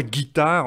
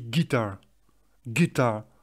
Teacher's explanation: on prononce très faiblement le R final. On dit pas guitare, on dit guitar. · c'est juste qu'en fait on prononce très faiblement le r final